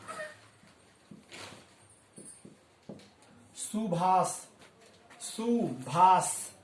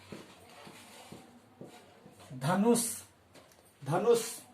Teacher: स का उच्चारण होने के साथ ही यहाँ पर ऐसा मालूम पड़ेगा कि जो ध्वनि उत्पन्न होती है वह नीचे की ओर आ रही है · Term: दंत स